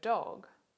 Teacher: if the vocal chords are vibrating we have a voiced alveolar stop the di sound in the word dog is an example and